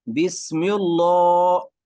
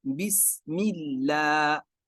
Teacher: آپ کے سامنے ہے بسم اللہ، مل لا از رانگ، غلط، مل لا کیوں؟ رول یہ ہے جب بھی لفظ اللہ سے پہلے زیر آ جائے تو وہاں پر ہم لفظ اللہ کو باریک پڑھیں گے